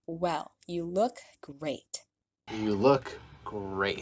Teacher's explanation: He really stresses the words look and great, which is why he releases the T at the end of great, when normally we'd pronounce it with a stopped T.